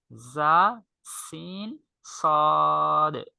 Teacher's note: মাখরাজ অর্থই উচ্চারণের স্থান একই, অর্থাৎ জিহ্বার আগা সামনের নিচের 2 দাঁতের আগা এবং পেটের সঙ্গে লাগে